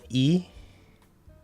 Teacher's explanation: even though the front is high the middle doesn't come up too